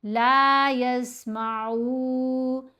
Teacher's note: इसी तरह यहाँ हम यस्मा नहीं करेंगे बल्कि आइन को पेश के साथ ही पढ़ेंगे, 2 हरकात की मिकदार लंबा भी करेंगे